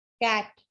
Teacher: कैट कहते हैं तो हमारी टंग जो है वो थोड़ी सी कैट कहते हुए फ्लैट हो जाती है